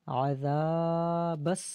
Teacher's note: ذال کو ایک الف کی مقدار کھینچیں گے